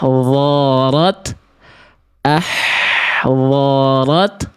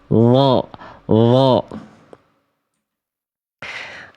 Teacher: Karena berubah menjadi huruf d ujung lidah ke ujung gigi atas nih.